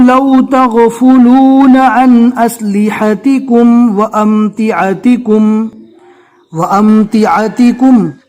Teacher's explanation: عین کو حلق سے ادا کرنا ہے اور الف کو جو ہے نارمل پڑھنا ہے